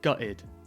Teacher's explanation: as with many casual terms in British English quite often we don't pronounce the T so you'll hear a lot gutted guide oh I'm so gutted